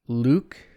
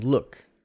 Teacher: in luke and uh as in look a very similar distinction ooh is tense uh is lax relaxed is shorter